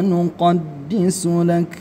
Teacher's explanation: ketika kafnya ini disukunkan, maka dia harus ada desisnya. Desisnya itu disebut dengan hams. Hams ya. Hams itu dia mengeluarkan angin.